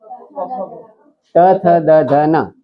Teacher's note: જીભ દાંતને અડે તો જ એ પાંચ અક્ષર બોલી શકાય છે